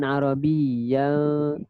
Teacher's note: Tanwin bertemu lam hukum dia idgham bila gunnah, memasukkan tanpa dengung.